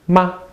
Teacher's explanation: it doesn't have a tone mark this is called the neutral tone